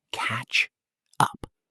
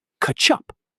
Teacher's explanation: The consonant sound at the end links right into the vowel of the second word. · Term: connected speech